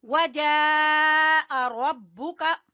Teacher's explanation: ये है मद वाजिब, इसको खींचेंगे तीन अलिफ के बराबर